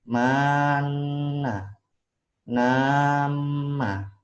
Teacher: mana ditahan 2 harokat dan dengung